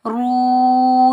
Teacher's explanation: را کے اوپر پیش، آگے واو ساکن ہے، را کو ہم پر پڑھیں گے موٹا پڑھیں گے، را کو ہم واو ساکن سے ملائیں گے، یہ واو مدہ ہے، اس کو ہم ایک الف کی مقدار کھینچ کر ادا کریں گے